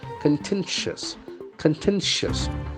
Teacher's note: The accent falls for the second syllable.